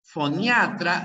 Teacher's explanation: la fuerza de voz está en la a